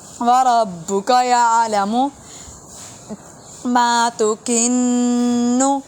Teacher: نون مشدد ہے اس لیے اس پہ غنہ کر رہے ہیں